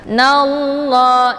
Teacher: Nallah, jadi bukan dibaca nalla ya. Dan untuk lamnya dibaca panjang 2 harokat karena ini merupakan mad tabi'i muqaddar